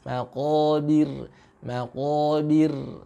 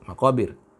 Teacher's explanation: rohnya sukun tapi didahului oleh baris kasroh. Maka ini dibaca dengan tarkik tipis. Maqabir, maqabir ya, dengan sedikit mencucukkan mulut kita ke belakang.